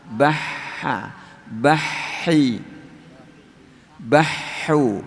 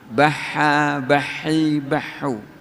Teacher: Ha itu makhrajnya di tenggorokan bagian tengah sini. Jadi tipis. Sama, yaitu punya sifat hames.